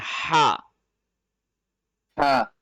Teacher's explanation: ہا گلے کے درمیان والے حصے سے پڑھا جاتا ہے